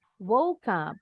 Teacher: E-nya silent ya, nggak bunyi. Berarti ini diakhiri dengan bunyi huruf K. Woke disambung ke bunyi huruf U.